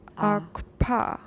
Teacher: of the kiss so that you are making little more than a labial velar articulation between vowels. The result should be a labial velar stop, much as in the Yoruba word akpa.